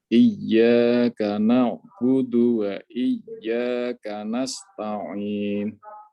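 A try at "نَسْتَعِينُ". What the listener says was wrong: Ditarkikan lagi. Nasta. Ta, lepaskan saja. Nasta'in. Ta'in.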